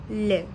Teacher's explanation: Point de la langue contre l'alvéole. L'air passe sur les côtes. Voile de palais relevé. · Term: Alvéolaire latéral